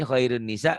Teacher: Jadi nunnya dibaca double, ditahan dan dengung ke hidung. · Diidghamkan, dimasukkan, disertai dengan dengung. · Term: idgham bi gunnah